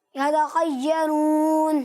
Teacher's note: خا کی آواز بالکل واضح ہونی چاہیے، حروف مستعلیہ میں سے، اس لیے اسے پر پڑھنا ہے